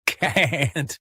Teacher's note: But in British English, the vowel is long.